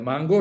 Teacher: la primera nasal de Mango mango es velar